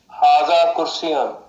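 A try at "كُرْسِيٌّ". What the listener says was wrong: कुर्सी के या को शद के साथ पढ़ेंगे, कुर्सीयुन।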